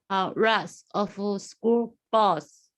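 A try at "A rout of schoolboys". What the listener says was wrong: A route. Route. Got to work on the R.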